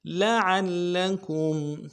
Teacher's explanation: عین کو آگے لام کے ساتھ ملانا ہے. لام کے اوپر تشدید ہے، زور دینا ہے.